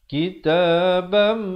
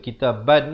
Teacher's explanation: Jadi yang betulnya antunazzila alaihim kitabam. Tanwin bertemu mim, idgham bi gunnah. Masuk beserta dengung 2 harakat.